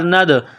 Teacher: دال ساکن ہے تو یہاں پر قلقلہ کریں گے،